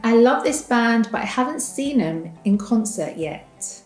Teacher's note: when we reduce the word them, the TH sound is silent and all we hear is M